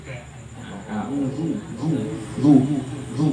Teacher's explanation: Makhrajul huruf za itu ujung lidah bertemu dengan gigi seri atas